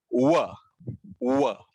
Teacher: ये दंत्य ओष्ठ्य अक्षर है, दांतों और होंठों के बीच का व, या इसे ओष्ठ्य अक्षर भी कहा जा सकता है, व।